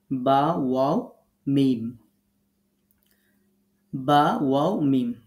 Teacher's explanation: দুই ঠোঁট থেকে আমরা তিনটি হরফ উচ্চারণ করব · মিম বা ওয়াও মিম মনে রাখবেন যখন আমরা বা উচ্চারণ করব ঠোঁটটা স্বাভাবিক পজিশনে রাখবেন দেখবেন ঠোঁটের যে ভিজা অংশ আছে এখান থেকে বা উচ্চারিত হবে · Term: 15 নাম্বার মাখরাজ